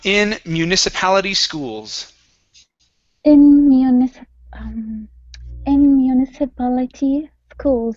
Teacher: our stress is right here on PAL.